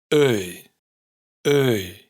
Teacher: Este es el diptongo más contraintuitivo de todos, ya que su escritura no se parece en nada a como suena en realidad. Empieza con el sonido de Ö y también se va cerrando hacia un sonido de I abierta. El resultado es Öy, Öy.